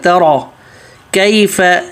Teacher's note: ترى تا پتلا را موٹا